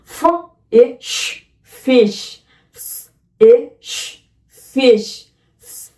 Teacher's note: উপরের পাটির দাঁত নিচের ঠোঁটের নরম অংশে লাগিয়ে বাতাস যে ছাড়বে সেটি আটকানোর চেষ্টা করবে, তাহলে ফ উচ্চারিত হবে।